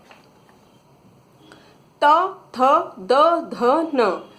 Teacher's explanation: आप इन सभी वर्णों का अगर उच्चारण करेंगे तो जीवा दांत को टच करती है